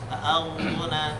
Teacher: Jadi ghain itu kalau disukun nggak boleh ada penekanan yang kemudian seakan-akan menjadi qalqalah.